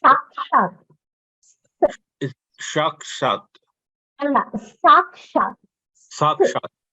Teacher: That s becomes double. So it's a forcible sa.